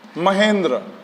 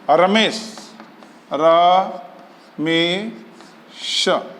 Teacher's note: आ और ई मिलकर के ए बन जाता है